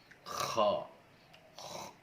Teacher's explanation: Huruf kha dikeluarkan dari tenggorokan yang dekat dengan rongga mulut. Maka huruf kha ini sama seperti orang mendengkur.